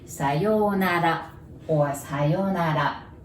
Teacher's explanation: And also there is R there, and we don't have R sound in Japanese, so you pronounce it like L